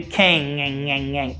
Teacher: The G sound at the end of the word king is not pronounced.